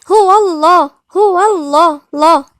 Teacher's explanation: احنا فخمناها عشان الواو عليها فتحة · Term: مفخمة